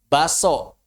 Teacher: Kebanyakan orang Indonesia umumnya bacanya apa? Baso. K-nya hilang. Hadzf itu namanya.